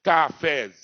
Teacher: É o zi que é a sílaba tônica.